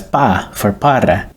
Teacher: We also leave out the final syllables, such as pa for para.